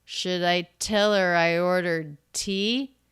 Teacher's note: the pitch goes up it's a yes no question